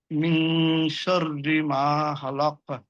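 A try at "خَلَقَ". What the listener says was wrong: খলাক, কলকলা হচ্ছে না।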